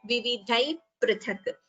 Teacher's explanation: a visarga followed by pa, upadhmaniya. So we don't chant the visarga completely, we chant it as vividhai prithak.